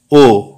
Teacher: ও উচ্চমধ্য, পশ্চাৎ, বর্তুল, অর্ধসংবৃত, কণ্ঠ।